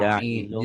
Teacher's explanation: Sudah bagus, tapi di ikhfanya jangan jailung ya. Kalau ketemu fa, ada M-nya, jailung, bibirnya mingkem. Bibir atas, bibir bawah Ja'ilun.